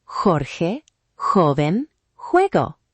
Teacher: It's softer than English H in some regions, stronger in others. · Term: Spanish J sound